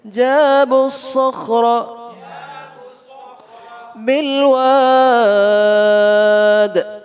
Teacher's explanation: صاد خا دونوں موٹے ہیں را بھی موٹا ہے